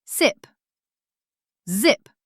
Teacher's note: Z is voiced. Vibration felt in throat.